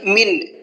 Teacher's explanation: یہاں پر نون ساکن کی آواز کو ظاہر کر کے پڑھنا ہے، صاف صاف پڑھنا ہے، غنہ اخفا کچھ بھی نہیں کرنا ہے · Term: اظہار کا قاعدہ